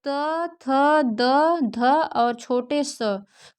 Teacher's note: त थ द ध और छोटे स का उच्चारण स्थान जो होता है दंत होता है